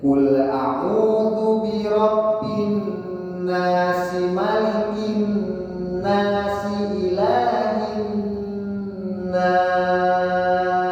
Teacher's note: Harokatnya tidak boleh panjang kalau memang dilanjut atau diwasol dari ayat 1 ke ayat 2. Berikan harokat aslinya 2 harokat matobi'i.